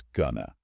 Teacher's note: they physically shrink. Their vowels become soft, almost non-existent little grunts.